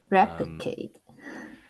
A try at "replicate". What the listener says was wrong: There's a lee sound there and you're missing out.